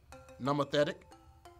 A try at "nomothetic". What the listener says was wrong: Neither of those O's are pronounced like O's.